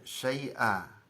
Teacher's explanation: itu dibaca syai'a, panjang 2 harokat. Ininya tanwinnya hilang, nun annya hilang, syai'a ya, bukan syai'an ya.